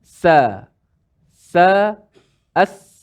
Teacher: Tempat keluar ataupun tempat lahir dia sama sahaja. Iaitu hujung lidah kita menekan di belakang gigi bawah. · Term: sin